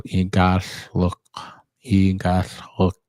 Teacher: And so the double L is pronounced with the tongue on the roof of your mouth, and then let air escape both sides, and it has almost like a hissing sound.